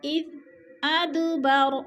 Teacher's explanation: اذ پہ ذال نرم حروف میں سے ہے، اس کو ہم نے نرم کر کے پڑھنا ہے اور ہلانا نہیں ہے